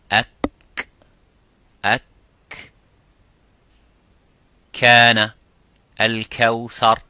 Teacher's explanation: the kaf touches the roof of the mouth a little bit, touches the bone of the roof of the mouth, which is further towards the tongue, towards the lips.